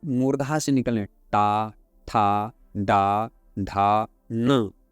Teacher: इसके बाद आता है मूर्धन्य, मूर्धा से निकलने टा, ठा, डा, ढा, न।